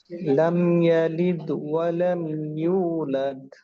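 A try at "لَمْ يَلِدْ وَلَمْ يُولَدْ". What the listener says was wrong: আপনার এই মাঝের কলকলাটা কিন্তু সুন্দর ছিল, এটা লিদ। শেষেরটায় আবার ওই একই সমস্যা দেখা দিল। আওয়াজ প্রকাশ করতে হবে, বাকি বাতাস থাকবে। হ্যাঁ, কলকলা অবশ্যই করতে হবে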